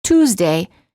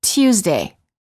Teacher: Some British speakers often add an extra y sound before the oo.